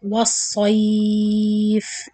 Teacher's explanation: The sod heavy and the stretching on the ya.